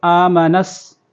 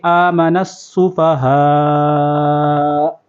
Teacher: کما آمن السفہاء، یہاں پر یہ خیال کرنا ہے حمزہ ہے تو ایک الف اس کو کھینچیں گے. آمنس، سین کے اوپر تشدید ہے، نون کو سین کے ساتھ ملائیں گے. آمن السفہاء، یہاں پر وقف کریں گے.